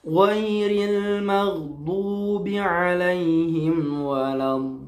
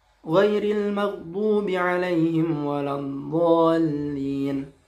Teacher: Pada lafaz waladdallin itu panjangnya harus 6 ya. Tidak boleh kurang. Nah, ketika kita membacanya misalkan jadi pendek, ghairil maghdubi alaihim waladdallin. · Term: mad lazim mustaqal kalimi